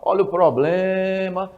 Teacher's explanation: você vai ver que a sílaba forte é prolongada em blém. Ou seja, esta sílaba blém é a sílaba forte.